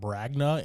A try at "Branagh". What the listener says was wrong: Yeah, the G is definitely not there in the middle,